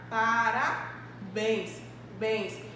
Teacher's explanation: A gente percebe justamente que possui um som aberto em relação à vogal E. Então, a gente vai perceber que a minha sílaba tônica está justamente no finalzinho da minha palavra.